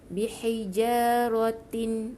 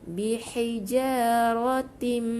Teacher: Masukkan bunyi nun dalam bunyi mim yang bersabdu dengan dua harakat dengung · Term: idgham bi gunnah